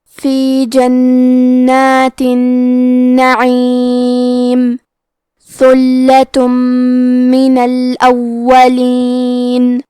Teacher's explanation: کلمت ثلہ میں حرف الثا کی ادائیگی زبان کے سر اور اوپر کے دانتوں کے اندرونی کناروں سے ہے · عین کی ادائیگی حلق کے درمیان والے حصے سے ہے